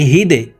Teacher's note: দাল কলকলার হরফ নিচের দিকে ধাবিত করে ধাক্কা দিয়ে উচ্চারণ করতে হবে